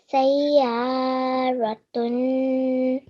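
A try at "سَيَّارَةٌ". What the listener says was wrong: excellent, mashallah, well done.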